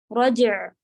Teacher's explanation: رجع، رجع نہیں کہیں گے، رج پہ قلقلہ جیم کا، پھر عین ساکن